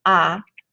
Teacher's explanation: your mouth is the widest open for the first vowel ah and then it gets progressively smaller as you go ah and